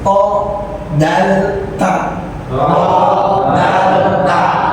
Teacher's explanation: Ujung lidah bertemu gusi atas. Ujung lidah bertemu gusi atas. Dalam ya. Tempat nancapnya gigi seri.